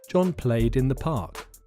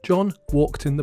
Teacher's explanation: walk ends in a sound which is not voiced so walked ends with an unvoiced ending